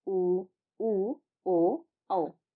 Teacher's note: वृत्ताकार स्वर उन स्वरों को कहा जाता है जिनके उच्चारण में हमारे जो होठ होते हैं वह वृत्त के समान गोल हो जाते हैं। जैसे में उ ओ औ अगर आप इन सभी को आईने के सामने बोलेंगे तो आप देख पाएंगे कि आपके जो होठ है वो वृत्त के समान गोल हो जा रहे हैं।